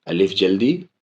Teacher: لام میں مد، میم میں بھی مد، میم میں تشدید، اس لیے غنہ